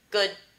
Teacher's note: So they're happening at the same time, because your tongue does get to the alveolar ridge to make the D sound. Good. But you don't release it. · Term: no audible release